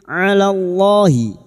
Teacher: di sini kita wasal atau terus kita uraikan pada kalimat alallahi lam jalalah yang didahului fathah kita baca tafkim